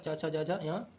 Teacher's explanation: च वर्ग तालु से बोला जाता है।